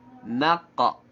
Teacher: Naqa. Na-nya tetap na, yang tebal hanya di qafnya saja.